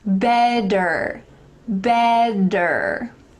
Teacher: in american english often when there's a t surrounded by vowels those t's will change to d's